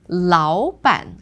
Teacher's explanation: in 老板, because it's 2 third tones, it becomes the second.